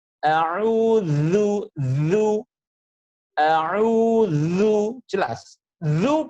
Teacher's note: Makhrajnya huruf zal itu ada di ujung lidah dan ujung gigi seri atas.